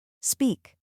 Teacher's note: the E sound, like in speak. Your lips pull slightly.